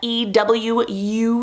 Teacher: my mouth does glide, so I think that's a diphthong